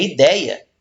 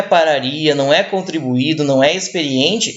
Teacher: O segundo I sai muito mais fraco por ele estar no meio de 2 vogais fortes, tá? Então, nesse caso, a gente normalmente junta, né, a semivogal com a primeira vogal forte, nesse caso, né?